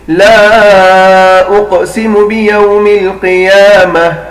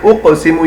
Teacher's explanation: یہاں پر ہم نے قلقلہ کیا، قاف کو ہلکا سا ہلایا، اس کے علاوہ پوری لائن میں کسی بھی حرف کو ہم نے نہیں ہلایا۔